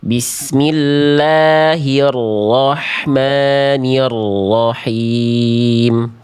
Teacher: Huruf ro memang getarannya tidak boleh berlebihan. Tapi bukan berarti getarannya hilang, tetap getarannya jelas Bunda. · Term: getaran huruf ro